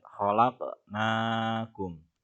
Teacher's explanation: Di sini ada huruf qof mati, maka hukumnya adalah qalqalah atau kita tebalkan atau memantul.